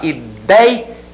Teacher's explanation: Ela apresenta o ditongo ei, com essa pronúncia, aberto, e na sílaba tônica